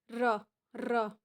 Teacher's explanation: ઉચ્ચારણ વખતે જીભ સામાન્ય કંપાય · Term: પ્રકંપી વ્યંજન